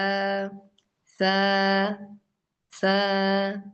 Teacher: Next letter is സ. സ എന്ന അക്ഷരം വായിക്കുമ്പോൾ നാവിന്റെ ടിപ്പ് മേലത്തെ പല്ലിന് ടച്ച് ആവണം